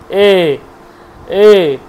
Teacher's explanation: কণ্ঠ এবং তালু দুটোকে লাগে এ। দেখুন কণ্ঠ লাগছে এ, এ, এ উচ্চারণ করছে এ, এই, দেখুন কণ্ঠ কাঁপছে, আবার দিকে জিহ্বাটা ঠিক তালুর দিকে এগিয়ে যাচ্ছে, এ, এ, যাচ্ছে না, তালুর দিকে কিন্তু জিহ্বাটা এগিয়ে যাচ্ছে। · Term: কণ্ঠ তালু